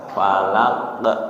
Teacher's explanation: Qalqalahnya falaq. Dikeluarin, ditempel, dilepas nggih.